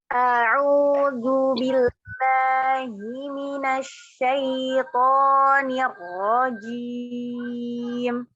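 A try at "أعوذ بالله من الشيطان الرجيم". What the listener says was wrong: Tinggal zalnya dikeluarkan lagi lidahnya sedikit. Tinggal nanti dilatih istiqomah akan terus huruf izalnya dikeluarkannya, Bunda.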